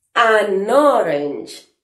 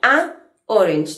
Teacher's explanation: Sin embargo, si digo an orange, la pronunciación de estas dos palabras juntas es mucho más fluida, porque estoy uniendo la N con la O